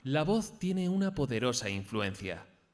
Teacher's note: vamos a intentar comenzar la frase en un tono agudo y acabar en grave